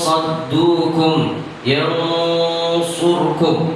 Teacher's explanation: Ini terbaca huruf shad karena nun dan shad makhrajnya tidak jauh beda, sehingga posisi kita masih mengucapkan huruf nun. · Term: ikhfa